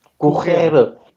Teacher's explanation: You're doing the guttural R in the middle there. Wow. At the end, you're doing the rolled R.